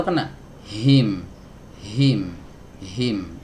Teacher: dari tenggorokan bagian bawah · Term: huruf H